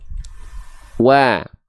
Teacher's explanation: Huruf waw harus dilafalkan monyong muncung mulutnya, maju mulutnya.